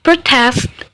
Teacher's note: protest as verb stress placement in second syllable